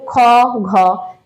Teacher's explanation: নির্গত হচ্ছে আর কি সেটা হচ্ছে অল্প প্রাণ ঠিক আছে আর যখন আমাদের বায়ু হচ্ছে শ্বাসবায়ু যখন খুব তাড়াতাড়ি খুব দ্রুত হচ্ছে তখন সেটাকে বলবো হচ্ছে মহাপ্রাণ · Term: মহাপ্রাণ ব্যঞ্জন ধ্বনি